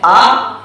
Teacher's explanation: اسی طریقے بتانا چاہ رہا ہوں کہ حمزہ اور عین میں عام لوگ اس کی آواز میں فرق نہیں کر پاتے ہیں. تو حمزہ جو ہے جیسے آ، جیسے الذین یا انعمتا میں یا انذرتہم میں، تو یہ تو نکلتا ہے شروع حلق سے